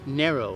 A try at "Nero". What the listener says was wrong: so you said narrow though.